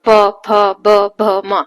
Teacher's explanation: तो इनको जब आप बोलते हो तो दोनों लिप्स आपके टच होते हैं बोलते वक्त